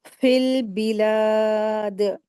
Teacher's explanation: जब हम दाल के ऊपर वफ़ करेंगे, तो यहाँ पर दाल के ऊपर कलकला होगा